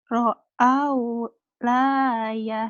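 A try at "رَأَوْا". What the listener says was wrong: ini nggak mungkin lah, Neng. Ini alif. Kalau yang la itu pasti nyambung. Ini alif ya. Bedanya alif dan lam bisa nyambung. Kalau alif nggak bisa nyambung dengan huruf berikutnya. Kalau huruf yang lain dengan alif bisa nyambung tuh.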